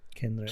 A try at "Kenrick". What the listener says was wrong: Ken, like not Kenrick. It's Kenrick. with an E. E, not with an A.